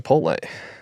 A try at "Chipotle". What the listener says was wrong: Oh, you might have dropped the T. Chipotle.